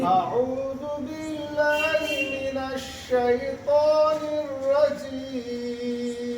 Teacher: এক আলিফের পরিমাণ হচ্ছে 2 হারকাত সমান, তাহলে 3 আলিফের পরিমাণ 6 হারকাত। একে 6 হারকাত সমান টানতে হবে।